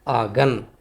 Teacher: دوسرا ہے نون غنہ، اس کی آواز ناک سے نکلتی ہے